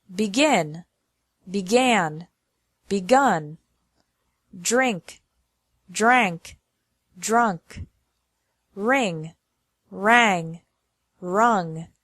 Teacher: The Vowel changes from I to a to U